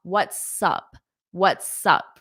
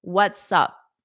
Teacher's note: you can hold out that S before you say up